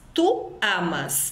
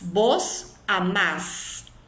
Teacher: Sempre a última sílaba vai ser a sílaba tônica, no caso de usar o pronome pessoal vos.